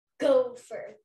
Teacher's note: you naturally said gopher and made go the strongest chunk